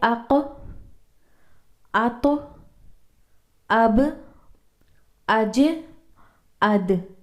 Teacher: ان حروف کا ساکن ہونا بہت ضروری ہے۔ تو قلقلہ کو جھٹکے سے یعنی ایکو ساؤنڈ کر کے پڑھیں گے